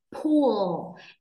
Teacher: âm l lưỡi đưa lên chân răng trên ạ. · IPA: /pʊl/